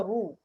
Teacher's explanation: را دمہ ہے, را دمہ رو, تو ہونٹ گول ہونے چاہیے